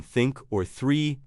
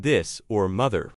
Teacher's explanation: The tongue tip lightly touches or rests just between the front teeth. Don't push too hard. · The difference is whether your vocal cords vibrate for both. The mechanism is the same. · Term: th sounds